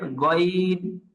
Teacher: মুখের খালি জায়গা থেকে উচ্চারণটা হলো গইন